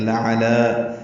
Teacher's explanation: دونوں لام باریک ہے, عین وسط حلق سے ادا ہوگا. دوسرے لام کو دو حرکات لمبا کریں گے.